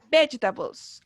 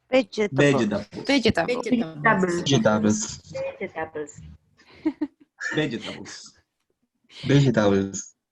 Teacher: Y cargamos la voz, ¿cierto? En las 2 primeras sílabas, ¿cierto? En veg.